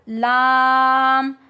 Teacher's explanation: لام زبان کی نوک اوپر کے دانتوں کے مسوڑوں سے جب لگتی ہے تو ہمارے پاس لام ادا ہوتا ہے. Tip of the tongue at gums of upper teeth.